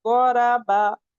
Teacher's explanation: ब में आपके दोनों ओर इनर पार्ट मिल रहे हैं।